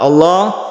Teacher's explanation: Kita awali dari lafdzul jalalah, ada lam jalalah, lafadz Allah. Ini dibaca tafkhim atau tebal karena sebelumnya ada fathah